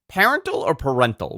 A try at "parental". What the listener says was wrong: I think the emphasis is on the wrong syllable, the way you say it.